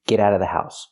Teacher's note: you don't have to pronounce the Vv sound in of because it's before a consonant.